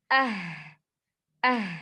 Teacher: memiliki sifat rokhowah yang mana suara mengalir